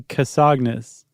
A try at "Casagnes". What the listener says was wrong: Well, if it's French, wouldn't it be Casson? Is that G pronounced?